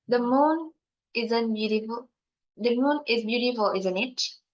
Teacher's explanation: The context of the sentence is about two people who both see the moon and the sentence using falling intonation because the tone at the end of the sentence is dropped. You can hear the moon isn't beautiful.